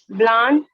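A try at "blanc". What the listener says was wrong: ब्लॉन्ग, अभी बताया ना, ए एन का साउंड कैसा आता है, ओ का। ब्लॉन्ग।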